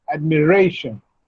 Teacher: So, the stress should be on re.